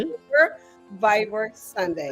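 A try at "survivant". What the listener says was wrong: Superviveur. Supervivant. In French would be actually without R. Supervivant.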